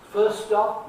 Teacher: I wasn't saying a T in first stop, right? Not in at the end of the word first. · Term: elision